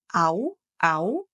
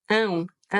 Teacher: a diferença entre fazer au, au, uma sílaba só oral, ou ão, ão